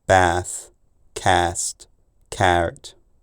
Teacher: London lengthened before th s f and certain consonant clusters involving n